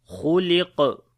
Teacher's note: Kha and qaf we read in heavy sound.